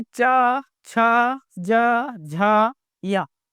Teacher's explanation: च का उच्चारण करने में जीभ जो है वो तालु से चिपका हुआ होता है।